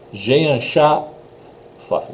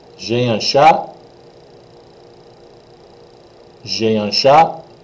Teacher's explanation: Notice that the T is totally silent. You don't say it at all.